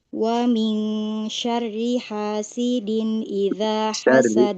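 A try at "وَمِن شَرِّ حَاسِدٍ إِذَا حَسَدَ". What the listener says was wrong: Nah, ini roknya masih agak kaku ya. Syarri. Baik, nanti roknya dilatih supaya tidak kaku ya.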